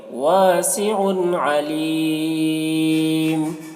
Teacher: واسع علیم، یہاں پر حرف مد یا ہے، حرف مد یا کے بعد میم کے 2 پیش کی جو تنوین ہے وہ سکون سے بدل جاری ہے، اور یہ سکون وقف کی وجہ سے آ رہا ہے، اس سکون کو عارضی کہتے ہیں، وقفی کہتے ہیں۔ تو حرف مد کے بعد سکون عارضی ہے، سکون وقف کی وجہ سے ہے، اس وجہ سے یہاں پر مد عارض وقفی ہوگا۔